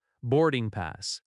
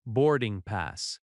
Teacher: The stress is on board and pass.